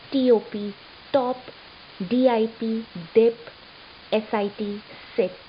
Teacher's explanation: I touch the tip of my tongue on the alveolar ridge right above the upper teeth